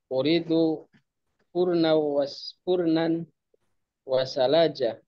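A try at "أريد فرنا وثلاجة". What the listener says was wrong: Nah, ini lamnya tasydid ya. Sallaja.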